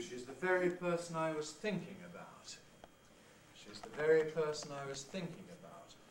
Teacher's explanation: there you'll notice the low pre head the high head stressed within it high fall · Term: high drop